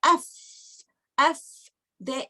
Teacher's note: if you say af, this vocal cords is open and there is a flow of air. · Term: hums